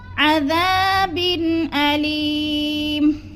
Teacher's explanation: اظہار حلقی، یعنی غنہ نہیں کریں گے، لفظ کو ظاہر کر کے پڑھیں گے۔